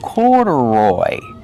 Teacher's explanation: Put the stress on the first and third syllable.